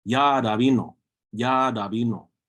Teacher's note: Sometimes that who is dropped, and it'll just be Yarabino.